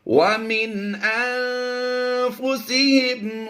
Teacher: یہاں پر نون ساکن کے بعد فا حروف اخفا میں سے ہے، یہاں پر اخفا کرتے ہوئے غنہ زمانی کریں گے